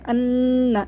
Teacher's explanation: نون مشدد کو غنّے کے ساتھ پڑھیں گے، دو دفعہ پڑھنا ہے نون کو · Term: غنّہ